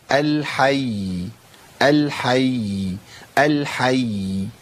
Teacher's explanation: ازود زمن شويه بس عشان ابين ان كان فيه هنا تشديد